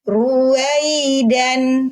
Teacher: Ya sukun bunyinya i, di huruf ya ada rohwah.